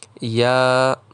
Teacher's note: یا کی ادائیگی میں الف ہے اسے ایک الف کے برابر کھینچ کے پڑھیں گے